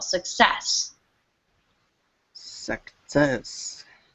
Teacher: just make sure you put the emphasis on the second syllable